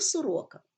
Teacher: у слові Сорока другий склад наголошений а перший і третій не наголошений